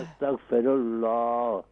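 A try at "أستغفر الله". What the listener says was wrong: آخر میں ہاں کو بھی کلیئر کریں۔ استغفر اللہ،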